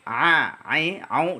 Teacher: Ain itu maksudnya berada di tenggorokan bagian tengah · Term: huruf Ain